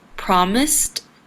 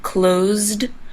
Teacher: promised and closed have an S before the Ed ending however promised has an S sound and closed has a z sound that's why promised has it ending and closed has the d